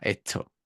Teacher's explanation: ahí tienes una aspiración muy grande de hecho dos la de la s y la de la t